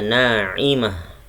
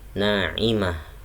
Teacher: Naimah ada tamarbutoh, bacanya naimah. Tamarbutoh berubah menjadi ha kalau di waqaf.